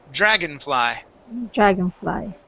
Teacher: the o n here we actually pronounce as a short I and an N so instead of dragon fly it is Dragon dragonfly dragonfly yep